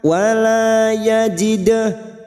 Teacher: Bihi wala, lam alif 2 harokat, wala yajidah, dal sukun qalqalah sugroh yang mati asli di tengah kalimat jangan lupa dipantulkan